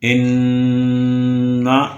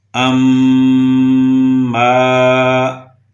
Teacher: غنہ ادا ہوتا ہے ناک کے بانسے سے۔ ناک کا یہ والا حصہ، اس کے اندر جو خلا ہے، یہاں سے غنہ ادا ہوتا ہے۔